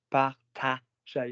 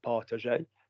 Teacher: Notice the A goes higher. Partager, not partager.